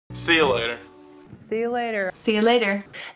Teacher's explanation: U is reduced to y when it's unstressed · The T in later is pronounced as a lingual flap T, which sounds a lot like a really quick D sound, rather than a true aspirated or fully released T.